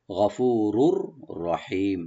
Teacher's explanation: রার উপরে যে তানবিন আছে, তানবিনের পরে যে রা আসছে আরেকটা, এখানে আমরা এদগাম করব, কিন্তু গুন্না হবে না, গুন্না ছাড়া, উইদাউট গুন্না।